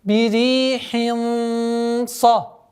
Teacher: Здесь у нас ихфа твердая, потому что после танвина кяср идет твердый звук сад. А как мы знаем, правило сокрытия подчиняется после идущему звуку.